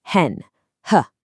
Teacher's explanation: And finally, the glottle sound. It is literally just a quick puff of voiceless air from an open throat.